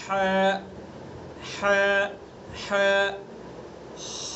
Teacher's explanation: ح وسط حلق، حلق کا درمیانی حصہ